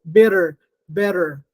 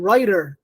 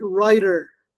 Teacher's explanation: we have the flap in which the touching is only once